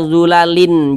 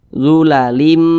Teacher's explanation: Bunyi tanwin ini dimasukkan ke huruf mim. Jadi ini jangan dibaca zulalin, jangan, tapi dimasukkan ke huruf mim. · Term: idgham bi gunnah